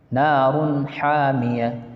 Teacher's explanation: دو پیش کی تنوین کے بعد حروف حلقی کے 6 حرفوں میں سے ہا آ رہا ہے نا، یہاں اظہار حلقی ہوگا